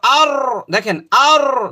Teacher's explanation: জিহ্বার উল্টা পিঠটা উপরে তালুর সঙ্গে যা ভাইব্রেট হয়, কম্পন হয়, কম্পন আর আর।